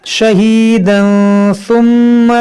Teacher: यहाँ तनवीन के बाद सा है तो यहाँ पर इख्फा करेंगे, मीम में गुन्ना करेंगे क्योंकि मुशद्दद है।